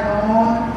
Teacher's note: জিহ্বার আগা উপরে তালুর সঙ্গে লাগায়া নুন। 10 নম্বর মাখরাজ জিহ্বার আগার উল্টাপে তার বরাবর উপরে তালুর সঙ্গে লাগায়া র।